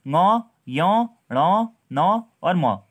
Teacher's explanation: अनुनासिक और अनुस्वार दोनों में दोस्तों हमारी जो ध्वनि होती है मुंह से भी और नाक से भी निकलती है